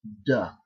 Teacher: The first is that you pronounce that final D as voiced. In other words, you use your vocal cords, and it's going to come out as duh.